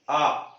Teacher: आ को बोलते समय जीभ पीछे खींच रही है, आ, जीभ पीछे जा रही है तो पश्च का मतलब ही पीछे होता है, ठीक है।